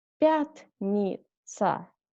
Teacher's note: Next one. Пятница. Accent on first ya.